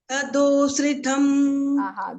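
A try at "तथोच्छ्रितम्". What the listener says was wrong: This is tha and this is cha. You have to watch out for pronunciation.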